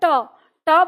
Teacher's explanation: ट वर्ण बोलते हैं तो मूर्धा पर मुड़ती है हमारी जीभ